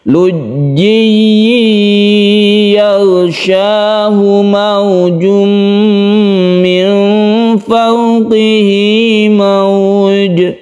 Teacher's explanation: Tasydid ya yang terbentuk dari idgham bi gunnah. Ada tanwin bertemu dengan ya, maka tanwin ini masuk ke huruf ya sehingga membentuk tasydid.